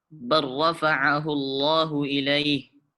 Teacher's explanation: Jadi cara membacanya, huruf lam kita idghamkan atau kita masukkan ke huruf setelahnya, yaitu huruf ra. Jadi maka huruf lam tidak terdengar lagi, langsung kita idghamkan ke huruf ra. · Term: idgham mutaqaribain